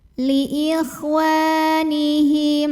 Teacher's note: Karena ada alif yang didahului baris fathah. Maka cara bacanya waw yang baris fathah ini kita panjangkan dua harokat saja.